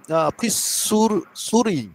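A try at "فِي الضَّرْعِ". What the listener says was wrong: ফিসুরি না, এটা দাদ শব্দটা। ফিদ দরাই, ফিদ দরাই, ফিদ দরাই, আইনের নিচে জের। ফিদ দরাই।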